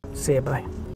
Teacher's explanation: Bye has a diphthong vowel, meaning there are actually 2 vowels being pronounced here. I, in quick succession.